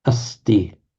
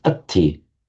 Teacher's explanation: the sibilant plus t becoming aspirated t